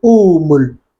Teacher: We changed the hamza into the haraka of the first alif. So because the alif is taking dhamma, this hamza, we just change it into waw